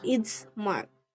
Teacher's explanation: The vocal cords soften the sound early because they are already preparing for the voice bilabial nasal in mark. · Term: partial voicing